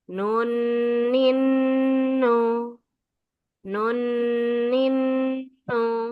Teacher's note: Ketika dia harakatnya adalah tasydid maka dibaca ghunah ya dengung dua harakat tidak kurang dan tidak lebih.